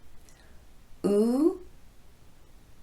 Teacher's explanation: with the long u sound the lips are quite protruded or pushed forward and the tongue is high in the back and very tense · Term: long oo sound